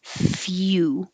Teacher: you're starting with your tongue in a Y position at the same time you make the F. Few. And then you have to round your lips.